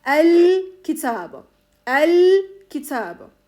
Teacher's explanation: Burada da lamı tarif açık bir şekilde okuyacağız